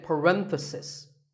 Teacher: If you talk about just one bracket, you say parenthesis. The stress is on ren.